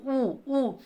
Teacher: उ ध्वनि का जो उच्चारण स्थान है ना वह है ओष्ठ से।